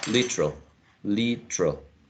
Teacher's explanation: That could be the pronunciation of the word using only 2. Literal, eliminating the schwa that is in the middle